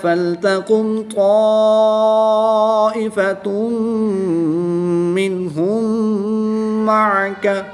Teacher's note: الف سے پہلے تو پر زبر ہے تو الف مدہ ہوگا، الف مدہ کے بعد حمزہ اسی کلمے میں ہے تو یہاں پر مد متصل ہوگی، 3 سے 5 الف تک کھینچ کر پڑھیں گے · دو پیش کی تنوین کے بعد میم حروف یرملون میں سے ہے تو یہاں پر ادغام مع الغنہ ہوگا یعنی کہ غنہ کر کے پڑھیں گے۔